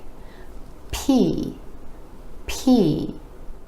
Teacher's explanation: You want to make sure you have that air puff or else it might sound more like B.